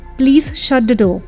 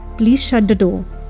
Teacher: door this sentence looks as if it is a request but if the sentence is spoken with a falling tone it requires an authoritative tone and becomes a command